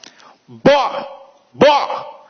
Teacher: Observa que o B, ele começa com interrupção, mas o O não tem.